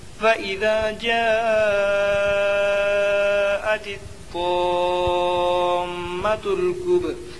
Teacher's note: کب میں قلقلہ ہوگا، حروف قلقلہ کے 5 حرفوں میں سے با آیا اور با کے اوپر جزم ہے، اس لیے با میں قلقلہ ہوگا